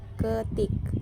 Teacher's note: direalisasikan sebagai bunyi I tinggi bawah depan tak bundar apabila berada pada silabel tertutup atau silabel berkoda, seperti pada kata ketik. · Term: fonem I